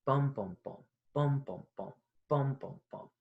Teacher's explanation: that stressed, unstressed, unstressed, stressed, unstressed, unstressed, okay, is dactylic rhythm. It's actually it's like anapestic, but instead of unstressed, unstressed, stressed, it's stressed, unstressed, unstressed.